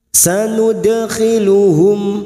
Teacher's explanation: Sanud, dal sukun qalqalah sugro, huruf dal sukun qalqalah sugro yang mati asli di tengah kalimat, jangan lupa dipantulkan, namanya qalqalah sugro.